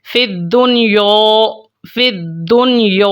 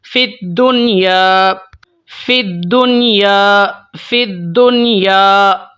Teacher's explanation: الف سے پہلے باریک حرف ہے جو کہ یا ہے، تو الف کو ہم نے لائٹلی، بالکل ہم نے ایزی ہو کے آسان سا ہم نے پڑھنا ہے، بالکل ہم نے اس کو باریک پڑھنا ہے